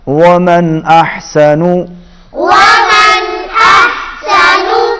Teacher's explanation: نون ساکن کے بعد حمزہ آ رہا ہے، اظہار ہوگا